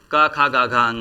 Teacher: कंठ वर्ग का या क वर्ग का उच्चारण कंठ से होता है